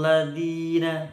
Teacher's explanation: hati-hati lidahnya nempel di gigi atas